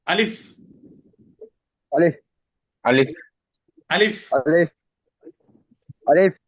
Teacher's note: আলিফটা মুখের খালি জায়গা থেকে উচ্চারণ করতে হবে এবং দ্রুত উচ্চারণ করতে হবে।